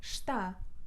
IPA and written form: ʃta (está)